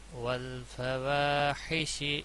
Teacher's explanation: یہاں پر الف مدہ ہے گویا اس کو تھوڑا کھینچ کر پڑھا جائے گا، دو الف کے برابر